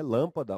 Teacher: Lâmpada já tem um som fechado, né? Lâmpada, uma proparoxítona, aquela famosa tonicidade na antepenúltima sílaba.